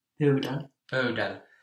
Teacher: In the spoken language on pöydällä, you might hear the entire last syllable dropping out.